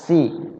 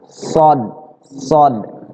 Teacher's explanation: Kalau sin nggak menyentuh gigi seri, bedanya begitu. Kalau sod nyentuh. Ya, so, nyentuh gigi seri.